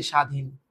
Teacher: হয় না আদ্য বফলা অনুচ্চারিত থাকে যেমন ধর এইযে স্বাধীন উচ্চারণ কর এই বফলা নাই ভ্যালুলেস এবার